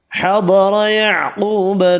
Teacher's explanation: ضاد قاف حروف مستعلیہ پر پڑھیں گے، واو مدہ 1 الف کی مقدار میں کھینچ کر پڑھیں گے۔